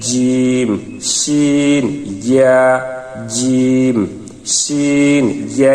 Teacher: মধ্যে একটি পেঁচের মতো, এসের মতো আছে, এই জন্য এটাকে মধ্যখান পেঁচানো কাফ বলা হয়। 6 নম্বর মাখরাজ, জিহ্বার মধ্যখান তার বরাবর উপরের তালুর সঙ্গে লাগাইয়া